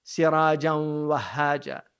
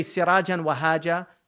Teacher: There's an idgham there because the huruf al-idgham yarmalun, the waw there is there, you get the tanween, so it should go assimilate.